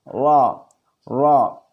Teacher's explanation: Huruf ra keluarnya adalah ujung lidah mengarah dekat punggungnya dipertemukan dengan langit-langit depan sesudah makhraj nun.